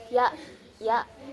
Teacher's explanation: huruf ya ini ee keluar dari langit-langit belakang.